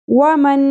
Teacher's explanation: نون ساکن کے بعد حروف یمنوں میں سے جب نون آ جائے تو ملاتے ہوئے پڑھتے ہیں، ان دونوں نون کو ہم ملا دیں گے اور ساتھ غنہ کریں گے، یعنی آواز کو تھوڑی دیر کے لیے ناک میں ٹھہرائیں گے۔ وَمَن، اس طرح، ٹھیک ہے۔